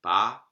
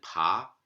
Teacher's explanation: for aspiration and ejecta Vitesse Oh at each place of articulation Klamath contrasts a plain voiceless stop as in BA an aspirated voiceless stop as in pop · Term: three-way laryngeal contrast